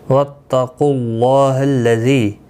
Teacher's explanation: اللہ کا لام اس پیش کی وجہ سے پر پڑھا جائے گا، اس کے اوپر کھڑی زبر بھی ہے، ایک الف کی مقدار کے برابر کھینچ کر پڑھیں گے۔